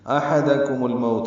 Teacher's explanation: ہا وسط حلق سے ادا کریں گے. میم کو الموت کے لام سے ملا دینا ہے، احدکم الموت، لام ساکن پہ اظہار قمری ہے، مو وولین ہے، تا پر پیش ہے، معروف طریقے سے جلدی ادا کریں گے.